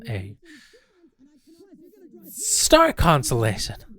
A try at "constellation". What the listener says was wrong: Do you mean constellation? No, you said consolation.